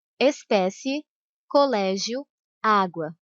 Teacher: Por isso é chamado de ditongo crescente. Vai do som mais fraco, que é a semivogal, para o som mais forte, que é a vogal.